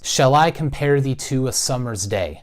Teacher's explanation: read it in sort of that up-down up-down rhythm · the first syllable is unstressed and the second syllable is stressed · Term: iambic pentameter